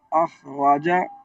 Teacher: जो है ना रा पर जबर को खींचेंगे नहीं